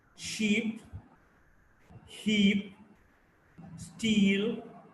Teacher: E is a front close unrounded vowel.